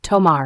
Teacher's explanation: T is pronounced more softly than in English, closer to the TT in butter. The tongue touches the teeth, making it softer, for example, tomar for take.